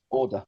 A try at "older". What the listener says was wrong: No R. No R. No R. No R.